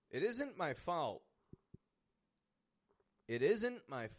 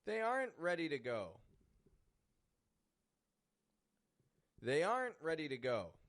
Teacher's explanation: you focus on the contractions you focus on stopping T and making the N short